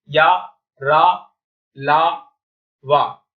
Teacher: सिर्फ 4 प्रकार के अंतस्थ व्यंजन होते हैं, या, र, ल, व। जिह्वा जो हमारी जीभ होती है मुख के किसी भाग को स्पर्श नहीं करती है